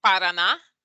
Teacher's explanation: you see the emphasis is on that last ah